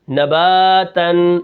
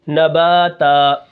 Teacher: حالت وقف میں دو زبر کو الف سے بدلیں گے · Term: وقف بالابدال